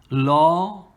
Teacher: this lam becomes tafkhim with that aw sound, law.